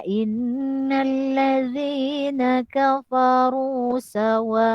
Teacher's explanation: Ingat di sini adalah hukum bacaan mad wajib muttasil. Panjang dia 4 atau 5 harakat. Maka panjangkan.